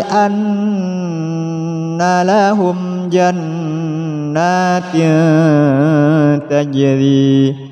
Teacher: Terdapat nun tasydid, jadi harus didengungkan, ditahan.